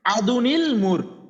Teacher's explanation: এই যে আদুনের নুন সাকিনটার যে লাস্টে নুনটা আসে, এই যে মানে তানবিনের লাস্টে যে নুনটা আসে পড়লে, ওই নুন সাকিনের নুনটাকে এই হামজাতুল ওয়াসালের নিচে বসায় দেওয়া হয়, দিয়ে একটা জের দিয়ে পড়া হয় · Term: নুনে কুতনি